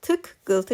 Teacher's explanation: Tıqqıltı sözünün tələffüzü zamanı birinci q k-ya keçir. Tık, qıltı kimi tələffüz olunur.